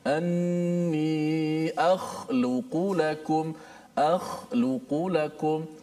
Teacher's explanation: Huruf itu kha, sama ada di berbaris di atas kha, depan khu, bawah khi, ataupun mati seperti ayat kita contohkan ini, akhluqu lakum, tempatnya sama di mana? Hujung halqum. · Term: huruf kha